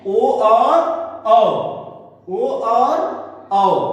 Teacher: दो वर्ण कंठोष्ठ हैं जिनका उच्चारण कंठ और ओठ दोनों से होता है।